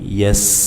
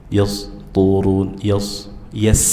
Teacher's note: sin sukun dibaca dengan jelas dan saofir ada desisannya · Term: sifat saofir